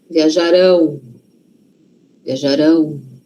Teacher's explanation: Futuro não é lá na frente? Então, a sílaba forte está lá na frente.